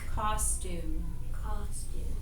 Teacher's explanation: the first syllable is accented costume because that's where our mouth is open wider